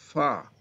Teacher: فا اوپر کے دانتوں کے کنارے اور نیچے کے ہونٹ کی تری والے حصے سے